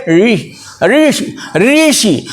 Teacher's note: इसमें जीभ तलवे में जाकर चिपक जाएगी और उच्चारण कर दीजिए, बिल्कुल शुद्ध होगा।